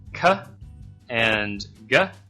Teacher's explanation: cut and go are produced in the back